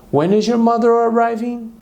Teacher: o que ela fez aqui foi contrair when, que é uma WH question, com o verbo to be is, formando whens